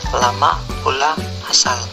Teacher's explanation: Konsonan L, bunyi apikoalveolar sampingan bersuara